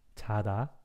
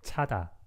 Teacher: And like somewhere between J and CH, 자다. And this one is like a strong CH sound, 차다.